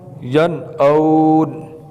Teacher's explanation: یہاں نون ساکن ہے، آگے حمزہ ہے تو غنہ نہیں کریں گے، جلدی سے پڑھیں گے